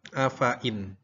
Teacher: Afain, hati-hati, fa-nya dibaca pendek. Jadi setiap ada kata afain, maka fa-nya walaupun tulisannya panjang, tapi dibacanya pendek.